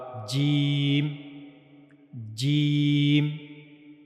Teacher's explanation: جیم کو ادا کیا جائے گا زبان کے درمیانی حصے اور منہ کے اوپر والے حصے کو استعمال کر کے، کہ زبان کا جو درمیانی حصہ ہے یہ والا حصہ، یہ جب منہ کے اوپر والے حصے سے یہاں پر جا کر ملے گا تو وہاں سے جیم ادا ہوگا۔